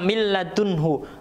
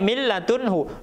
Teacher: nunnya menghilang, ya. Jadi lamnya dimasukkan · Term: idgham bila ghunnah